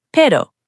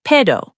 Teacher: A single R in Spanish is softer than English, almost like a quick D sound. Pero, but. The R sounds like a soft flap.